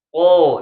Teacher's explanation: qo itu pangkal lidah naik